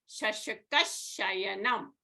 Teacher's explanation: Visarga followed by sh, you could leave as it is, or you could say shashakash shayanam, or Visarga will become a shakara.